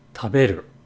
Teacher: For example, in the word taberu, as in eat, the ta is a low tone, the be is a high tone, and the ru is a low tone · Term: pitch accent patterns